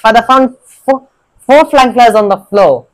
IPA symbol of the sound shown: f